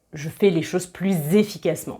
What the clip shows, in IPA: pluz